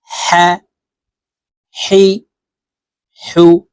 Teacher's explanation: হলকের মধ্যখান থেকে হা হরফের উচ্চারণ করবো